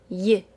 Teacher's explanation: The Y sound is created by lifting the middle of our tongue so that it almost touches the roof of our mouth, then voicing the sound